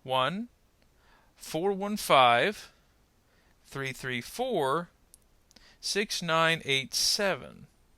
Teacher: we have to indicate this with the change in pitch then we will group the next three numbers together pause and then the last four